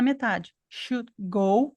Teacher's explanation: Esse D do should é uma stop. Como vem uma consoante depois, ele não falou esse D.